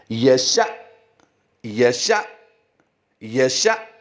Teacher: اس وقت آپ کی سکرین پر جو دو لفظ نظر آ رہے ہیں ان کے آخری حرف پر ہم جھٹکا دیں گے کیونکہ وہ حمزہ ساکنہ ہے۔ حمزہ ساکنہ کو ہمیشہ جھٹکا دے کر پڑھتے ہیں